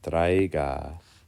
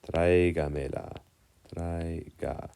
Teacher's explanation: In the word traiga, we accent the A.